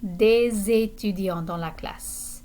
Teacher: And notice the liaison entre, between des and étudiants.